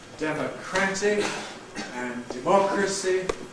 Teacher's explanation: [de] becomes [dɪ], [mɒ] becomes [mə], [kræ] becomes [krə], as we switch from one to the other.